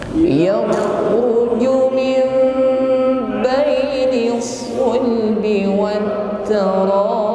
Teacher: Ib ditutup huruf ba dan kita tampakkan bunyi qalqalah